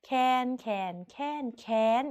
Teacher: คำว่าแค้นเป็นรูปโทแต่เสียงตรีค่ะ